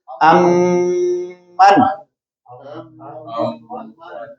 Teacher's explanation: یہ جو لمبا کیا ہے یہ غنہ، اور من نہیں کہا، پہلی میم کو دوسری میم میں مدغم کر دیا